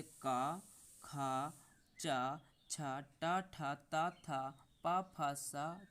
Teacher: इनके उच्चारण में कंपन नहीं होता है। ये आपके अघोष वर्ण कहलाते हैं।